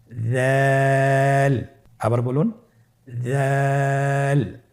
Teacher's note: দালের মাখরাজ হলো জিহ্বার আগা সামনের উপরের 2 দাঁতের আগার সঙ্গে লাগিয়ে উচ্চারিত হয়।